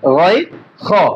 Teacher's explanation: হলকের শেষ ভাগ হইতে গয় খ, দুইটি হরফ উচ্চারিত হয়। তার মধ্যে এই যে খ হরফটা আমাদের একেবারে, এটা একটা মোটা হরফ।